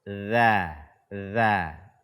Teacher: Telah kita terangkan bahwa huruf dzal keluarnya adalah dari ujung lidah kita bersentuhan dengan ujung gigi atas. Za.